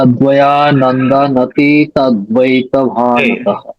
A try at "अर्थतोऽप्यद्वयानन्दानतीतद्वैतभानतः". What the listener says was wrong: वहां पे अभी रुको मत। अभी वहां न में रुको मत, न का पूर्ण उच्चारण करो। अर्थतोऽप्यद्वयानन्दानति तद्वैत भानतः। दा को आप लेंदिंग करेंगे, मतलब दीर्घ